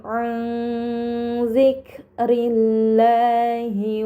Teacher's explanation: Ini dinamakan ikhfa hakiki, maka nun sukun dibaca secara samar dengan gunnah yang dipanjangkan